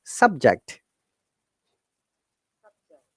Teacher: So for the noun and adjective, the stress should be first part. So it is higher intonation to fall intonation.